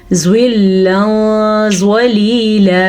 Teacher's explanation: تنوین کے بعد زوا آ گیا تو پھر سے ہم نے چھپانا ہے، ساتھ غنہ بھی کرنا ہے